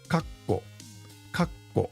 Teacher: But just the space alone doesn't do it. You put a little bit of emphasis on the double consonant.